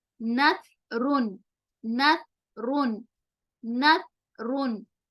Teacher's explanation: Example نثرن، جس میں ہم سا کی سین کی سیٹی والی آواز نہیں آنے دیں گے، بلکہ منہ کے اندر ہوا کو روکتے ہوئے زبان کی نوک سامنے والے دانتوں کو ٹکراتے ہوئے سا کا مخرج نکلتا ہے. نثرن، نثرن جس میں بالکل بھی س والی آواز نہیں آئے گی.